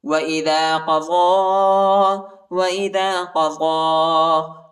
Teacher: ضاد کے اوپر جو ہے کھڑا زبر اور چھوٹا مدی، اس کو تقریباً 2-3 سیکنڈ تک کھینچیں گے، اور یا کے اوپر جو ہے حرکت نہیں ہے، یا نہیں پڑھا جاتا.